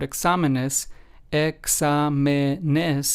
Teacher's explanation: we have the accent on the second syllable, despite this word examenes, examenes, having four syllables.